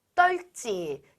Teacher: 리을, 비읍에서는 비읍이 떨어져 나가고 리을이 발음되는 것이 일반적이에요.